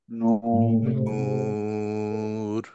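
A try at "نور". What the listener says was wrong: র আরেকটু হেভি, নূর। একটু হেভি হবে ভাইয়া।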